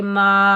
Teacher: मीम के ऊपर ज़बर, आगे बड़ी मद है, मद मुत्तसिल वाजिब, इसको हम 5 अलिफ की मिकदार खींच कर अदा करेंगे।